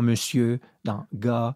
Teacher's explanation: il y a des mots comme ça où on ne prononce pas le R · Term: le R muet